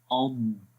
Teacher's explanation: اب اس کو اض ایسے نہیں پڑھیں گے، اس میں کلکلا ہو جاتا ہے، ٹھیک ہے. آواز کے اندر استطالت ہوتی ہے، یعنی کہ تھوڑی سی آواز لمبی ہو جائے گی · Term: ضاد